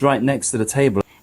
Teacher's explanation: make the t sound become slightly voiced, producing next to, which occurs in fast or informal speech